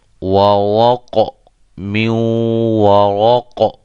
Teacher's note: اچھا جی، ورق من ورق اس کو ہم قاف کو قلقلہ کر کے پڑھیں گے، یہ را موٹی ہوگی وقف کے دوران کیونکہ را یہ ساکن ہو جائے گی